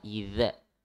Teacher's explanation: Di zal yang ada titik ya di atasnya. Itu makhrajnya di ujung lidah nempel ke ujung gigi seri. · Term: huruf zal